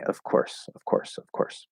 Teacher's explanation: they'll sort of drop that voice on the f um and just flow into the voicelessness of the k of